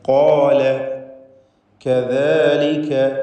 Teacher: ഖാഫും അതിൻ്റെ ദീർഘാക്ഷരമായ അലിഫും തഫ്ഖീം ചെയ്യുക, തടിപ്പിക്കുക